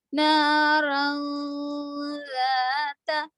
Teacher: پھر دیکھیے نون الف زبر نہ، رو دو زبر ون، لیکن اس کے بعد دیکھیں گے ذال ہے، ذال حرف اقفا میں سے تو رو کو چھپانا ہے. رو میں جو تنوین میں نون کی آواز ہے اس کو چھپائیں گے · واؤ جیسے نہ روں پڑھ رہے آپ، روں واؤ کی آواز لا رہے تو غلط ہے آواز. روں بھی نہیں پڑھیں گے، رن بھی نہیں پڑھیں گے اور رئی بھی نہیں پڑھیں گے، راں پڑھیں گے جس میں نون کی آواز نہیں آئے گی